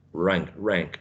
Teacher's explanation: the tongue is curled back, right? In between the alveolar ridge and the hard palate